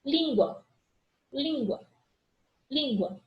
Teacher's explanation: eu tenho a vogal A e a semivogal U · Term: ditongo